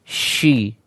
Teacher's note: Ya, pastikan ketika shin, ya, udara yang menyebar banyak, ya, karena shin memiliki sifat nanti yang namanya adalah at-tafashi, yaitu menyebarnya udara atau banyaknya udara yang mengalir di dalam mulut